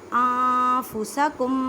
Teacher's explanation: انفسکم، اب دیکھیں نون ساکن کے بعد فا ہے، فا حروف اقفا میں سے ہے، اقفا کا قاعدہ کریں، ان نہیں کہنا، نون ساکن کی آواز کو چھپانا ہے۔